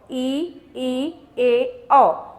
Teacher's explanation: दूसरा हमने देखा कि अ वृताकार इसमें वृत नहीं बनता है जो हमारे होठ है वो कोई भी वृत नहीं बनाते हैं गोल नहीं बनाते हैं